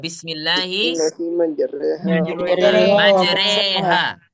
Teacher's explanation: ro-nya dibaca, dia menjadi imalah. Menjadi majre, Nah, di dalam riwayat Hafs mengucapkan itu hanya satu saja dibolehin.